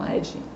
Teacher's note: eles falam com E totalmente aberto